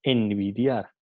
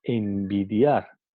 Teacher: el sonido bilabial B ha afectado el sonido que viene antes, ha afectado el fonema N. Entonces, y pasa a ser un alófono bilabial, ¿no?